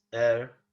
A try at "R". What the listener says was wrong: Non si sente neanche, R.